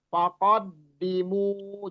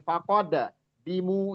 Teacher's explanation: di tasdid itu jangan dipantulkan cuma ditekan aja karena dia enggak enggak putus di situ